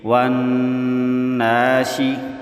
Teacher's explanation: نون مشدد پر غنہ کریں گے۔